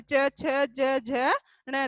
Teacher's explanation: च वर्ग है जो च, च न यानी जीभ है जो तालवे के टकरती है बोलते समय, च, छ, ज, झ, ण, तो वो तालवे से टकरती है तो वह स्पर्श व्यंजन है।